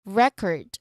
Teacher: the stress sits on the first syllable because that's what we are naming a thing, an object, a noun.